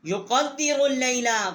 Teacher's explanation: یقدر اللیل، قاف جو ہے ہم نے اس کو دال کے ساتھ مشدد کیا ہے، اور را جو ہے اس کو ہم نے لام کے ساتھ مشدد کیا ہے۔